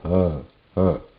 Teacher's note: This ha coming in the vyanjana, it has a nada or vibration in it. Like when I say ha, ha, you can hear that nada vibration.